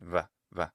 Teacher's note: when it's between vowels, it will become a voiced bilabial approximate, that is a v sound, v.